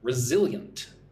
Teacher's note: So, three syllables. Stress goes on the second syllable, zil.